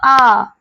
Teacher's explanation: जब आ बोलते हो आ तो ये पूरा मुंह खुलता है हमारा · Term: विवृत